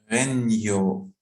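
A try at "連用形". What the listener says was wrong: Renyoke. Yeah, you have K here. Renyoke.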